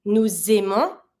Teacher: I am linking my S from nous to the vowel of the verb.